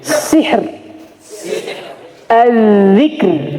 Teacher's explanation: Jadi ro pada makam ini ditipiskan tapi jangan sampai dihilangkan